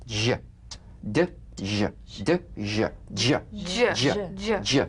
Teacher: It's a combination of the D drum beat and the ZH. So, place the tongue on the upper gum ridge for the D, D, then let the tip peel down for the ZH resonance.